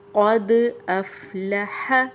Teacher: دیکھیں قاد، دال پہ جزم ہے، قاف موٹے حروف میں سے ہے۔ قد افلح، قد دال کی واضح آواز آ رہی ہے، اف حمزہ کی الگ سے آواز آ رہی ہے